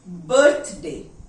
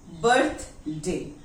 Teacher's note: TH is coming before the consonant D. So the TH is unvoiced.